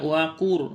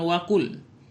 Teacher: Jadi ini dibaca waqur, bukan waqul, tapi langsung masuk kepada huruf ra. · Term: idgham